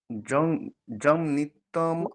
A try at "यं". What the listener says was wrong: জম নয়, জম নয়, ইয়ম, ইয়কার। यन्नित्यमानन्दमनन्तमेकं